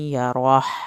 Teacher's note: ہا آپ نے اندر سے نکالنا ہے، یہ حلق والا ہا نہیں ہے